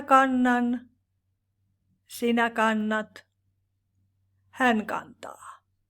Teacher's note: When we have NT, the T changes into N